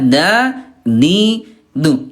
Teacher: Karena ayah buna yang pertama ada kemiripan dalam pendengaran, yang kedua tempatnya berdekatan. Ini bunda huruf dal tempat keluarnya ujung lidah ya disentuhkan dengan pangkal gigi seri atas